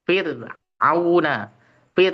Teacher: Kemudian ro sukun yang didahului kasrah. Fir auna pir itu tipis.